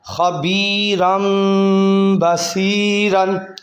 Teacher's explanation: آگے دیکھیں، خا زبر خا، با یا زیر بی، خوابی، را دو زبر میم رم، خبیرم، با زبر با، صاد یا زیر سی، باسی، را دو زبر رن، خبیرم بصیرن۔ یہ دونوں لفظوں میں تنوین کے بعد با آ گیا، با حروف اقلاب میں سے، تو اس کو بدل دیں گے میم کے اندر، ٹھیک ہے، یہ تنوین کو میم کے اندر بدلیں گے۔